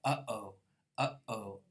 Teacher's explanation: The vocal cords themselves, which were way down in the vocal tract, are causing the obstruction. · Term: glottal stop